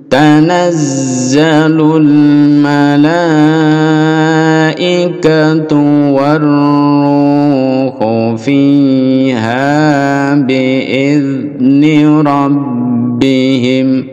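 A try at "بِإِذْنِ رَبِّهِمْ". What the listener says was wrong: Idni, idni, tidak boleh mantul. Idni, biidni,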